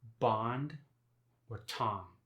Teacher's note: the only time the ah sound goes nasal, as it does in Chicago and New York, but not like French, is when it's followed by an M or N